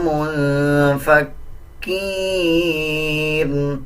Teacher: کاف کے اوپر شد ہے، مضبوطی کے ساتھ کاف کو ادا کیا جائے گا